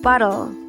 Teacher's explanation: So dapat daw ang bigkas natin dyan sa T na nasa gitna ay soft D.